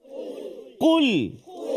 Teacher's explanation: Qul. Rasa tak dekat pangkal lidah kita tu? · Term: huruf qaf